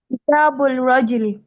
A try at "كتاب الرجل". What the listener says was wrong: You are saying kitabul, and we talked about Shamsiyya letter and Qamariyya letter in our very first class. Is Ra a Shamsiyya letter or Qamariyya letter? Shamsiyya. Yes, it's a Shamsiyya letter.